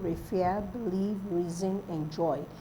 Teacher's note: apart from reason which is stressed on the first syllable others are stressed on the second syllable